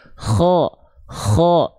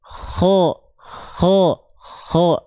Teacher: bahwasanya KH itu ada sedikit ngoroknya